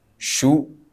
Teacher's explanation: makhrajnya sama cuman beda harakat aja beda bentuk bibirnya aja kalau syu agak monyong dikit